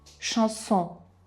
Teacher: C seguito da H, SH, e ON, che come abbiamo detto è il suono nasale che noi pronunceremo ON, quindi canzone, chanson.